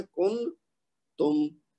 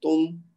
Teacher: لیکن اب چونکہ یہ ایک لفظ ہے اور نون ساکن کے بعد تا آ رہا ہے جو کہ حروف اخفا میں سے ایک ہے, تو ہم اس کو کیسے ادا کریں گے, تم, یعنی نون کی آواز کو شروع کیا ہے لیکن ساتھ ہی چھپانے کی کوشش شروع کر دی ہے, اور 2 حرکت تک کھینچتے کھینچتے اس کو غائب کر دیا